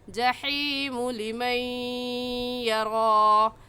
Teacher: हा हलक के दरमियान से निकाल कर पढ़ेंगे